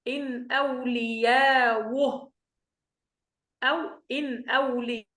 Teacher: بعد ذلك يكون عندنا التحقيق في الهمزة الأولى إن ونبدل الهمزة الثانية واو مع واو متحركة مع المد والقصر وإسكان الهاء